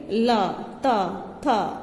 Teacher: ये हमारे जो वर्ण हैं ये दंत्य हैं, जो हम बोलेंगे ला, ता, था, तो ये हमारी जीभ दांतों पर स्पर्श करेगी, तो इसलिए इनका उच्चारण स्थान है दंत्य